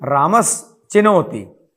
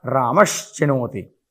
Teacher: दंत्य स को तालव्य श में बदल देंगे